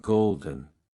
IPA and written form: ˈɡoʊldən (Golden)